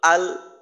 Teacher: লামের আওয়াজটা আটকায় তো আল যদি বলি তাহলে দেখা যায় যে জিহ্বার আগার অংশটা কোন একটা জায়গায় আটকায় ওই জায়গাটা হলো সামনের উপরের দাঁতের মারি